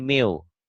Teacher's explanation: bunyi n-nya masuk ke w jadi miu. Paham nggak?